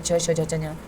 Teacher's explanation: जीवा हमारे ऊपर तालवे से छूती है